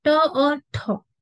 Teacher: अब ये ट तो है लेकिन अघोष होता क्या है ये भी आपने समझ लेना है। अघोष का मतलब है जिन ध्वनियों के उच्चारण में स्वर तंत्रियों में कंपन ना हो। हर वर्ग का पहला और दूसरा व्यंजन जो होता है वो आपका अघोष होता है।